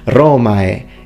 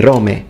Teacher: In fact, he says Romae. He uses the full diphthong, Romae. He doesn't say Rome.